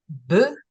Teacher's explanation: And the voiced stops, b, together, two dots together, means together, and it sounds together. B, again, it's a bilabial voice stop. So the articulation is very obvious, and it can be seen by other people